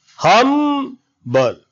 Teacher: Hum takes more energy, more time, more louder in comparison of the just beside word. Humble. 2 syllables, because we sound humble as hum and bul.